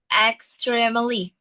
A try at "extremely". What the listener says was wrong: Extremely. Extreme. Kayak extreme langsung. Extremely gitu ya.